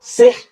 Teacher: Sihrun jadi sihr. R-nya dibaca tipis. 4 kondisi huruf ro harus dibaca tipis.